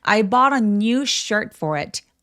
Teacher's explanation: t가 모음 사이에 끼어 있어요. 그런 경우에는요 t가 water 할 때처럼 굴러가는 소리를 낼 수 있어요.